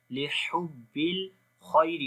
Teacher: خا کو موٹا پڑھیں گے، یا لین ہے نرم پڑھیں گے ، خیری را کو بھی باریک پڑھیں گے، زیر ہے اس